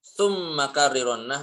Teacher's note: Maka rnya ini bacalah dengan sifat takrir. Maksudnya adalah tanpa banyak getar.